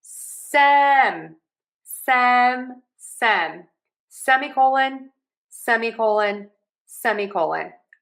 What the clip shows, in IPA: ˈsɛm.iˌkoʊ.lən